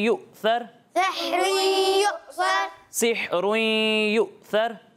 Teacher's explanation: हमज़ा साकिन को हम किस तरह पढ़ते हैं? झटका देकर, झटका देकर